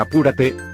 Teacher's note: lleva la mayor fuerza de voz en la ante penúltima sílaba